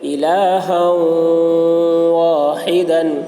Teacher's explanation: تنوین کے بعد حروف یرملون میں سے واو آ رہا ہے، اس لیے ہا کو واو سے ملا کر غنہ کے ساتھ پڑھیں گے، اس کو ادغام ناقص کہتے ہیں۔